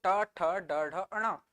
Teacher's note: फिर ट वर्ग की बात करूं तो ट ठ ड ढ अण, जब मैं उच्चारित कर रहा हूं तो जीभ कैसे मुड़ के ऊपर चली जा रही है, क्या मुड़ के ऊपर चली जा रही है, और जहां पर टच कर रहा है उस जगह को कहते हैं मूर्धा, इसीलिए क्या कह रहे हैं हम लोग, मूर्धन्य, ठीक है।